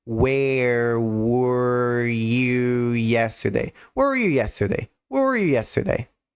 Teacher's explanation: Porque o where, perceba que é bico, e a língua ela fica relaxada na parte de baixo da boca. Agora, quando eu digo you, a língua ela fica tensa e próxima do céu da boca